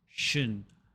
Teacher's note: it's important that you skip the vowel and go directly from the sh to the n, shin. Doing so will make you sound more natural and will make it easier for native speakers to understand you.